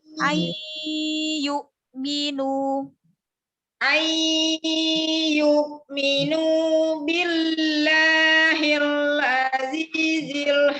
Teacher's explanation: Gunahnya nun bertemu ya, idgham bi gunahnya panjangin lagi. Masukin ke hidung, alirkan ke hidung suaranya.